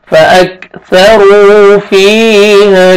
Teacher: را کو موٹا کر کے پڑھیں گے اور واو مدہ بھی ہے ، آپ نے ایک الف کے برابر آپ نے کھینچنا بھی